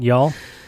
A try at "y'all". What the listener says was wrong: Next time, don't emphasis on the y'all. Just let it roll off. Y'all.